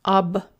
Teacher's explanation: But what happens is because there is a sign of separation here, a hard sign, a hard sign is a sign of separation. It does not allow palatalization. It doesn't allow the softening. And so you pronounce the B with your tongue farther back.